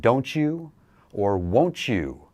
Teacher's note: that letter T and the Y sound sort of make a ch sound